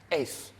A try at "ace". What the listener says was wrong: I was like, why does it sound like you're saying T?